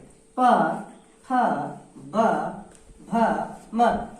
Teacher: इसी तरह से प, फ, ब, भ, म, इनका उच्चारण स्थान ओठ है या ओष्ठ भी बोलते हैं। उच्चारण करते समय हम देखते हैं कि दोनों ओष्ठ जब तक एक दूसरे को स्पर्श नहीं करती है, छूती नहीं है, तब तक इनका उच्चारण सही ढंग से नहीं हो पाता है